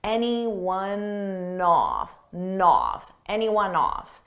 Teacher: Off starts with a vowel, and anyone, it ends on an N sound. So I can take that N and just add it in front of the vowel.